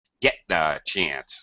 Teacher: th we kind of blend this out get the get that it's not really a very clear tea or a very clear th